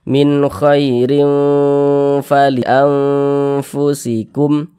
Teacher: termasuk huruf Ikfa Hakiki ausat maka ini hukumnya Ikfa Hakiki ausat maka bunyi tanwinnya kita samarkan kemudian kita dengungkan